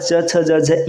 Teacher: च वर्ग का उच्चारण स्थान होता है तालू